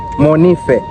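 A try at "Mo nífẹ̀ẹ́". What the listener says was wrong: intonation should not be high, it should be low. Monife.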